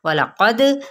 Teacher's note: وسط حلق سے ادا کرتے ہوئے میم پہ اظہار شفوی، وَلَقَدْ قاف کو پر بھی پڑھنا ہے اور دال پہ قلقلہ بھی کرنا ہے